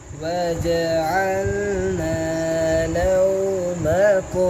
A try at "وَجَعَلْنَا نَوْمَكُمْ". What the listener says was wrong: आपने अल लाम क्लियर नहीं किया